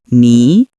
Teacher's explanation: Next, we have ni, which means you. It's a second tone which rises slightly.